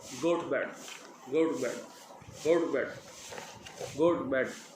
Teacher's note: Notice how the word टू becomes much shorter and the vowel less obvious. Vowel भी इतना focus नहीं है और वर्ड जो है टू बिल्कुल छोटा हो गया। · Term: schwa